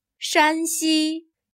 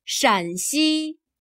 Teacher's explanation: Here, 山 has a high-level tone. · Here, 陕 has a lower, falling tone.